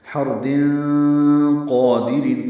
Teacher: را پر ہے کیونکہ ہا پر زبر ہے. تنوین کے بعد قاف آنے کی وجہ سے اخفا ہوگا. حرد قادرین، قاف پر پڑھیں گے، 2 حرکات لمبا کریں گے.